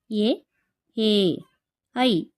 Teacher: ಕಂಠ ಮತ್ತು ತಾಲು ಅಂದರೆ ದವಡೆ ಈ ಎರಡು ಭಾಗಗಳ ಸಹಾಯದಿಂದ ಹುಟ್ಟುತ್ತವೆ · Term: ಕಂಠಾಲು